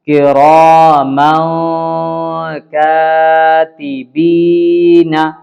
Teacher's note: دیکھیں یہاں پہ بھی میم الف 2 زبر من، تنوین کے بعد 2 قاعدہ بتایا گیا تھا، تنوین یا نون ساکن دونوں، تو یہاں پہ تنوین ہے، تو تنوین کے بعد اگر حروف اخفا کے 15 حرفوں میں سے کوئی حرف آئے تو اس نون کو بھی، جو تنوین میں آواز نکلتی ہے نون کی، اس کو بھی اخفا کریں گے اور چھپا کر کے پڑھیں گے